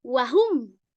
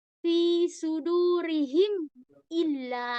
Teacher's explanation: Idhar syafawi. Dibaca jelas di bibir.